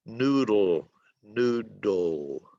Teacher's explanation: the letter D is voiced in the word noodle